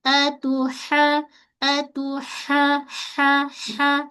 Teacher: kita sempitkan bahagian tengah kerongkong kita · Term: ha pedas